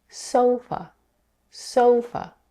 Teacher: in the word sofa, the first syllable, so, has the primary stress, while the second syllable, f, is unstressed.